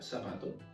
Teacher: el ceseo que consiste en pronunciar la c y la z como una S